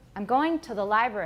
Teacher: we often have a schwa rather than a full vowel